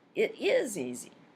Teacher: The listener replies with agreement shifting the focus to is